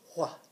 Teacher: We're going to learn this WH with a more of a breathy sound.